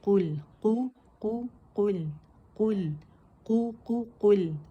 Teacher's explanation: لام جو ہے یہ اپنے سے پہلے متحرک حرف کے ساتھ ملا کے پڑھا جاتا ہے،